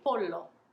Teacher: and i would encourage you to sound a bit silly by lingering on that l more and longer than it is comfortable for you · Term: double l